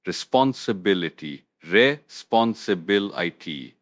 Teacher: The stress is on the bil syllable.